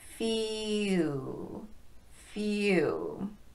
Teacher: I didn't include few in this list because it actually has two vowel sounds in it. It starts with E and transitions to oo.